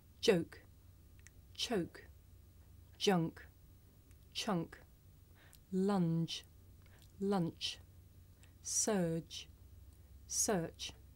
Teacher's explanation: the voiced sound that you hear at the beginning of the word joke and it's voiceless partner that you hear at the beginning of the word choke